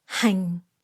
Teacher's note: The word for green onion is hành, falling tone.